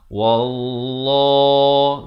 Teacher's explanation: Lafz jalalah dibaca tebal 2 harakat.